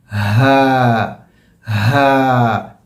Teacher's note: उर्दू ज़बान में हा की आवाज़ जो अदा होती है वो मुंह से अदा होती है, मतलब जो मौत कैविटी है यहाँ से आवाज़ आती है। अरबी ज़बान में जो हा की आवाज़ है वो जहाँ से हमज़ा की आवाज़ है वहीं से हा की भी आवाज़ है।